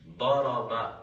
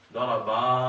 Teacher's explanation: اس با کو کھینچ کے پڑھا اور اس کے ساتھ الف لگا دیا